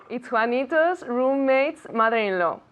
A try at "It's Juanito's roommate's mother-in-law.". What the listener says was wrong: Y muy bien, así y te llevas los últimos 50.